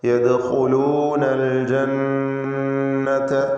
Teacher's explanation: യദ്ഖുലൂനൽ ജന്നത നൂൻ മുശദ്ദദയെ മണിക്കണം. · യദ്ഖുലൂന ഖാഇന് നിസ്ബിയ തഫ്ഖീം കൊടുക്കുക.